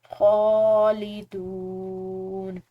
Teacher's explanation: خو کھڑی زبر کے ساتھ ہے تو اس کو ہم نے عام زبر کے مقابلے میں کھینچ کر ادا کرنا ہے